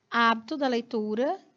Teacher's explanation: Hábito, que é uma proparoxítona, vai ter mais força na sílaba antepenúltima.